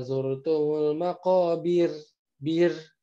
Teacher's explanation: Ro yang sukun sebelumnya kasroh. Maka dia menjadi tipis.